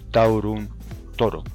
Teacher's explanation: el diptongo AO en castellano, monoptonga en O